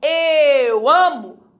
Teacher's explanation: Ok o que sobrou radical Então você descobre que eu amo o a é tônico está dentro do radical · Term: rizotônica, forma risotônica